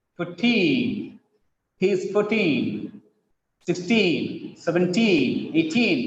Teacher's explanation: The teen words always have stress on the last syllable.